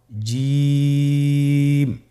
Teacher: এর মাখরাজ হলো জিহ্বার মধ্যখান তার বরাবর উপরের তালুর সঙ্গে লাগিয়ে উচ্চারিত হয় · জিম হরফটি বারিক হরফ এটা উচ্চারণ করতে হবে তিন আলিফ টেনে